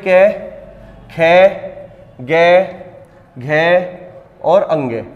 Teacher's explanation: उच्चारण स्थान कहां से होगा कंठ से